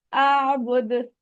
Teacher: और ये याद रखें, जब कलकला एंड पे आता है ना, यानी रुकते वक्त दरमियान में किसी हर्फ के आ रहा है, तो वो इतना शिद्दत वाला नहीं होता, लेकिन जो एंड पे आ रहा है वो थोड़ा स्ट्रॉन्ग कलकला होगा